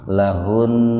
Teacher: Nun sakilah itu nun yang dibaca berat, tetapi tetap dibaca walaupun hampir tidak terdengar